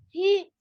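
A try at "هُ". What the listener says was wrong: That's not he. Second sound is ha. no, ha fatha ha sound ha.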